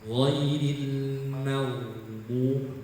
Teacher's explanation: Huruf ghain itu punya nafas ditahan, jahar ya, tetapi suara harus dialirkan ya. Jadi huruf ghain ketika mati pun berhenti ghairil mag.